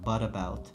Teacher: bu t'imiz bizda yumshoq d ga aylanar ekan